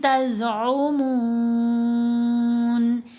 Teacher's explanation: عارضی طور پر مد لگائی جاتی ہے، لکھنے میں نہیں آئے گی، پڑھنے میں آتی ہے۔ اب ہم نے میم کو 3 سے 4 حرکات کی مقدار یہاں لمبا کرنا ہے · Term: مد عارض